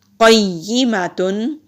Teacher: قیا زیر یی قیی میم زبر ما تا دو پیشتن قیماتن قاف حروف مستعلیہ میں سے ہے موٹا پڑھیں گے